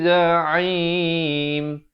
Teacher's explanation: Jadi di sini jangan dibaca wa ana bihi, tapi bacalah dengan wa ana bihi za'im. Za'im, ain di pertengahan kerongkong ya. Tapi di akhir baru masuk ke dalam mim, jangan masuk awal jadi za'im.